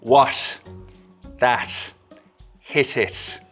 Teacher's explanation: It's a T sound made with a very soft closure at the tip of the tongue, or not even really quite a full closure at all. There's a slit left for the air to escape through. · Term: Irish slit T